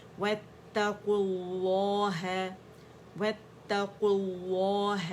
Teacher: اچھا یہاں بھی واتقوا ہے، لیکن یہاں پہ کیونکہ ہمارے پاس اجتماع الساکنین ہو رہا ہے تو یہ واو ڈراپ ہو جائے گا، اور قاف کی جو ضمہ ہے وہ لفظ الجلالہ سے جڑے گا، موٹائی سے پڑھا جائے گا